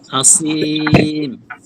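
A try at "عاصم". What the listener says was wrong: সিন হচ্ছে, সিন না সা, সা আসিম,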